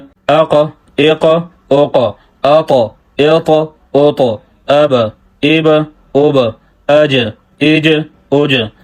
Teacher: قلقلہ کا معنی ہے ہلنا۔ جب یہ حروف ساکن ہو تو ان کے مخرج میں آواز ہل جاتی ہے۔ حروف قلقلہ میں 2 باتوں کا خیال رکھنا ضروری ہے، ایک یہ ہے کہ قلقلہ کرنا، دوسرا یہ ہے کہ قلقلہ کرتے وقت حرکت کا نہ بن جانا۔